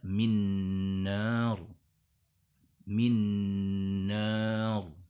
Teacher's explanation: Bunyi N nun sukun di kata min melebur ke bunyi N di kata nar di depannya dengan ditandai tasydid di kata nar tersebut. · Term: idgham bi gunnah